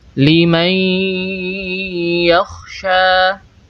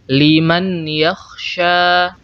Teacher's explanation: nun sukun tidak lagi kita Sebutkan secara sempurna Lim yaksya yang tersisa hanyalah sifat gunah dari nun sukun liakya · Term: idgham bhunah